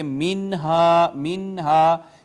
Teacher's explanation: وَكُلَا مِنْهَا، یہاں آپ دیکھیے الف کا ما قبل مفتوح تو الف مدہ، نون ساکن کے بعد یہاں بھی حروف اظہار آیا لہٰذا اس پہ اظہار ہوگا، آواز نہیں چھپائی جائے گی، ہم پڑھیں گے منہا منہا، اس کو منہا نہیں پڑھا جائے گا۔